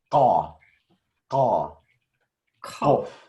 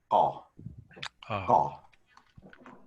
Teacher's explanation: This is actually a different k. It's uvular.